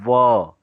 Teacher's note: देखिए वो आपका होठ जो है दांत को स्पर्श करता है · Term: दंतोष्ठ